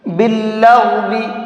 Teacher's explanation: غین کو منہ بھر کے پڑھیں گے